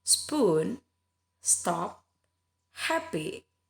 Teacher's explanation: tidak ada getaran bunyi getaran pada saat kita menyebutkan P itu ya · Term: bunyi letupan